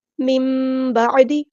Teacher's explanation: یردونکم من بعدی، یہاں پر ہمارے پاس اقلاب ہو رہا ہے. نون ساکن کے بعد با، تو نون کی ساکن کی آواز ہم میم میں بدل دیں گے. مم بعدی، عین کو مستحل لیکن مجھے تھوڑا سے ادا کرنا ہے.